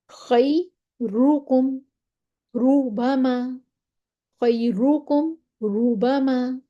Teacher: ٹھیک ہے، را کو موٹا پڑھنا ہے اگر اس پہ زبر ہوتی ہے۔ اچھا، را پہ پیش ہو پھر بھی موٹا پڑھنا ہے